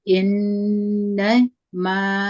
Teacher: په دغه ځای کې غنه ده چې موږ همزه په زیر د نون سره یو ځای کوو. دوه حرکت غنه ده.